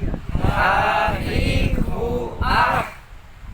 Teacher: H juga masih ada di tengah-tengah tenggorokan